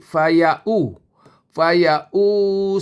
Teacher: Faya u bukan faya wu. Wau bunyi wu kan. Tapi dia bukan wau, dia hamzah.